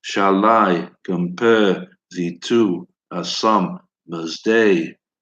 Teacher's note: it's an unstressed syllable followed by stressed syllable